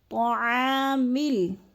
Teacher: طاع کو بھی تھوڑا سا کھینچنا ہے، الف مدہ ہے